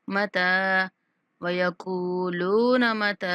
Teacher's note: تا کے اوپر کھڑا زبر ہے تو یہ بھی حروف مدہ کا مترادف ہوتا ہے تو ہم نے 1 سیکنڈ تک اس کو بھی لمبا کرنا ہے